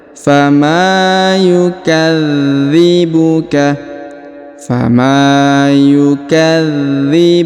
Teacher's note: huruf d ditahan dan ditekan karena terdapat tanda tasdid